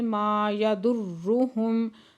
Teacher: ماں پہ الف مدہ دو حرکت کھینچ کے پڑھیں گے، یضرہم را مشدد سختی سے پڑھیں گے اور پھر میم ساکن